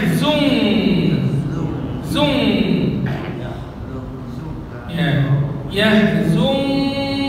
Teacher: kalau nun sukun ketemu Kaf bacanya bukan zun tapi jadi Eng